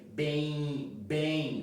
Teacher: nós não pronunciamos o M